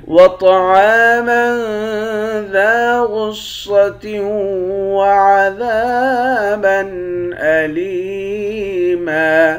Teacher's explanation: طا کو موٹا پڑھیں گے، عین کے بعد الف ہے، اس الف کو 1 الف کی مقدار کھینچ کر پڑھیں گے، الف حروف مدہ ہے۔